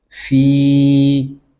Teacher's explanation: فا کو ہم کھینچ کر پڑھیں گے کیونکہ یہاں پہ یا مدہ ہو رہا ہے